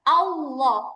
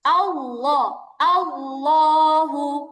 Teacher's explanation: যখন আমি দাঁতের আগায় লাগাবো তখন উচ্চারণটা খেয়াল করেন আল্লাহ, উচ্চারণটা আরো চিকন হয়ে যায়, কেমন যেন মানে আরো সরু হয়ে যায় উচ্চারণটা